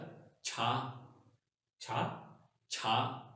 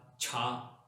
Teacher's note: थोड़ा सा एस्पिरेटेड, यानी कि आवाज थोड़ी सी आपने कह लें कि डीप निकालनी है, थोड़ी सी हवा के साथ, छा, ये छा था, ये छा, छा मीन होता है कार, गाड़ी।